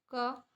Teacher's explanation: यह हमारे कंठ से निकलता है क की आवाज